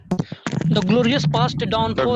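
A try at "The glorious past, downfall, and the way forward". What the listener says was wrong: यही अंतर है। जब हम बोल रहे थे the glorious past, downfall and the way forward, ये जो मेरे उतार चढ़ाव था मेरे बोलने में, जब तुम बोले the glorious past, the downfall, the, खत्म हो गया।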